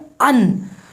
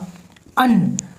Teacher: अगर आप कहेंगे अन, तो अन की शुरुआत आ से होगी लेकिन इनका समापन आधा ना के साथ होगा, अन, तो इसमें स्वर और व्यंजन दोनों आ गए, यानी ये संयोग से बना है।